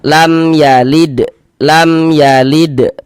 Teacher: dibaca jelas bunyi mim sukunnya. Kemudian tidak didengungkan, maka dibaca pendek saja. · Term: izhar syafawi